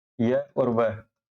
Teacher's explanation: व यह दोनों जो है संघर्ष हीन व्यंजन हो गए क्योंकि इनके उच्चारण में जो है वायु जो है बिना संघर्ष के बाहर निकल जाती है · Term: अर्ध स्वर